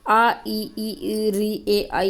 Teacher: अवर्ताकार जिनके उच्चारण को करते समय ओठ वर्त की तरह नहीं खुलते हैं।